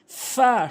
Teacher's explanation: উপরের দাঁতগুলো নিচের ঠোটের পেট মিলিত করে আপনি উচ্চারণ করবেন